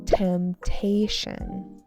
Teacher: temptation with a stress on the second syllable